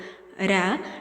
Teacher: நாவின் நுனி மேல் அன்னத்தின் முதல் பகுதியை தொட்டு வருவதால் ரகரம் தோன்றுகிறது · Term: இடையின ரகரம்